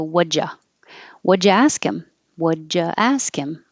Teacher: using the J instead of the oo, now you don't have a W connection.